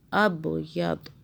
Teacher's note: حَتَّى يَتَبَيَّنَ لَكُمُ الْخَيْطُ الْأَبْيَضُ ابیض. ضاد پہ ہم نے جب رکے تو ہم نے ساکن کر دیا اور با پہ قلقلہ کیا